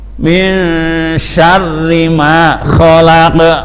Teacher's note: Ini qafnya khalaq itu agak dikeraskan